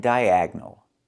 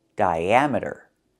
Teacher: Here the I makes a long I sound, but the A makes a short A sound like black cats. Because we're moving the stress to the second syllable. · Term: third pronunciation of D-I-A